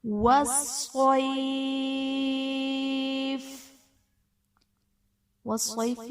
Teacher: والصیف میں صاد حرف مستعلیہ پر پڑھا جائے گا